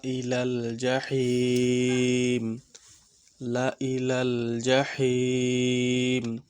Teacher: আর জাহি তিন আলিফ টান হবে